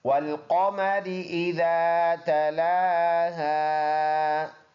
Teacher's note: قاف پر ادا ہونے والا حرف ہے، تالو سے جب زبان لگے گی تو یہ قاف موٹا حرف اس سے ادا ہوگا، پر زبان کا وہ حصہ تالو سے لگے جو گلے کی طرف ہے، اور را یہ باریک ہے۔